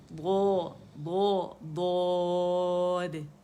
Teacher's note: ضو تک آواز جو ہے وہ سائڈوں سے ہی نکلے گی، ٹھیک ہے. اس پہ ہم نے زور دینا ہے.